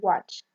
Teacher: We have W, that is voiced, bilabial, glide, example watch.